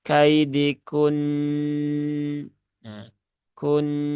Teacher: mana Nun bertasdid itu dibaca ada ghunahnya ya hukumnya ghunah musyaddadah maka ketika wakaf pada Nun yang bertasdid ya tunaikan ghunahnya kaidikun Kun ditahan tiga harakat bukan kaidikun ya Bukan begitu Bukan